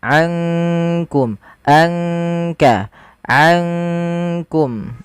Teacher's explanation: sedangkan ikhfa di antara keduanya di antara izhar ataupun idgham makaum langsung kepada makhraj disamarkan kepada makhraj Kaf